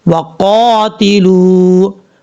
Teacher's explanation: قاف حروف مستعلیٰ میں سے پر پڑھا جائے گا، لام کے بعد واو مدہ ہے، اس کو بھی ایک الف کی مقدار لمبا کریں گے۔